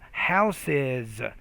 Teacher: Then we have houses, and the actual ES is pronounced as an additional syllable